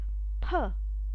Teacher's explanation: i have to expel the air expel means move out this air from the mouth with the puff